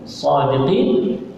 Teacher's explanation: sadiqin dekat sini mad arif lis sukun, boleh dibaca dengan 2, 4 ataupun 6 harakat